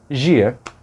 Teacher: o som do D antes de I será igual ao som do J